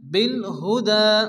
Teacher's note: দালের উপর খারাজ জবর এক টেনে পড়তে হবে